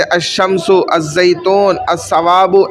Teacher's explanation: مدغم ہو گیا، داخل ہو گیا، لام نہیں پڑھا جا رہا۔ الزیتون میں لام نہیں پڑھا جا رہا، الثواب میں لام نہیں پڑھا جا رہا۔ · الشمس میں دیکھیں لام نہیں پڑھا جا رہا